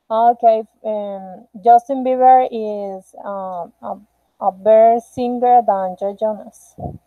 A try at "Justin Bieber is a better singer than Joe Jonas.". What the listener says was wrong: Okay, yes, the sentence is very well done.